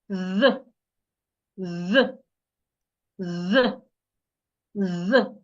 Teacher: for the voiced TH, you put your tongue in between your upper teeth and your lower teeth, and you make vibration. You make sure that your vocal cord vibrates like this.